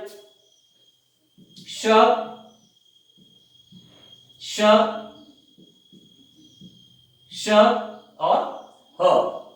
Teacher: तो ये ऊष्म व्यंजन है, क्योंकि इनका जो उच्चारण होता है वो, इनको संघर्षी व्यंजन भी कहते हैं, यानी घर्षण के साथ ये व्यंजन बाहर निकलते हैं। ऐसा लगता है जैसे घिसते हुए बाहर निकल रहे हैं घर्षण के साथ।